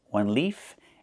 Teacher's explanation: One leaf with the F sound with no voice. One leaf and two leaves.